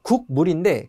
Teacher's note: 미음의 영향을 받아서 국을 궁으로 발음을 하는 거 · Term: 비음